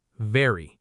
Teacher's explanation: Top teeth, bottom lip, voice.